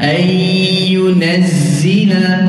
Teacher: Huruf zai, kata ulama, berdesir seperti lebah. Itu sebab zai ni ditebal sedikit daripada zal.